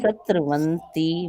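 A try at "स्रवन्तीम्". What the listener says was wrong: स्र नहीं है, स्रवंती है, स्त्र नहीं है, स में र जुड़ा हुआ है, त्र नहीं है। स्रवंती माँ, स्रवंती माँ, स्र। इनको आप अभ्यास करना, मेरा मंत्र सुनते रहो, मतलब उसमें अभ्यास कर लो, क्योंकि बहुत दिनों का आपका अभ्यास है वैसे बोलने का, है ना, तो वो थोड़ा सा करना पड़ता है। हाँ, जुबान में।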